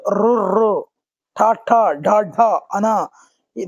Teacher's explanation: నాలుకతో గట్టిగా అంగిలను తాకుతో పలికేవి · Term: మూర్ధన్యాలు